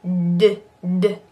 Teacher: D is very similar to T but it's what we call voiced so instead of just going tt which is purely air d